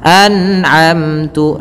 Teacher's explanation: ketika ada nun mati kita lihat bertemu dengan huruf ain, maka dibaca dengan jelas suara nunnya, dan kita baca dengan bacaan namanya izhar halqi.